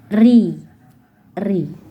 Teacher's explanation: Jika kasrah dia tipis berbunyi ri